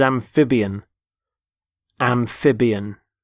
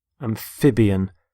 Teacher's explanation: Notice the stress on the middle syllable, amphib.